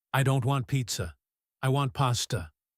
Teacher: She stresses the word pizza, and she stresses the word pasta. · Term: contrastive stress